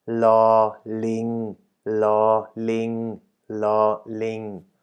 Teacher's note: The tones of these consonants are as follows. La, the consonant itself is a middle tone. And the marker word, ling, which means, as you can see from the picture or the image, monkey is as well a middle tone.